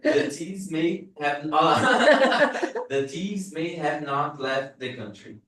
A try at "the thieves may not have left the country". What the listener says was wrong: you are still saying each word kind of separately